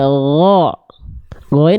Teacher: ya lagi bunda dialirkan suaranya diringankan dilesin G lagi g g dilafalkan dari tenggorokan paling atas sama kayak huruf k tapi engak keluar nafas alirkan suaranya